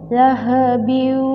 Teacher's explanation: Nah, ini adalah tanwin bertemu dengan huruf wawu, maka disebut dengan idgham bi gunnah